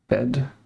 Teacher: Vocal semi-abierta anterior no arrendada. So that's open mid front unrounded.